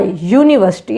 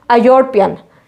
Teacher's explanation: it is giving us the sound of Y, university. It is not giving us the sound of U.